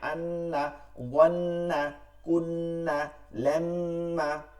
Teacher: নুনে ও মিমে তাসদিদ থাকলে ওয়াজিব গুনাহ করে পড়তে হয় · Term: ওয়াজিব গুন্না